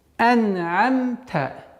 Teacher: Скажем так, удержание доли секунды, чтобы свойство назализации выявилось и проявилось.